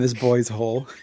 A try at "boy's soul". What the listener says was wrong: Boys. It sounds like you're saying hole. It's soul, boy's soul.